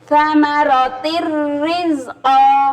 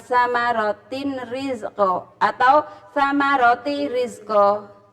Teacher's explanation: Jadi hurufnya melebur, nun atau tanwin melebur pada huruf sesudahnya tanpa dengung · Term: ilgham bila guna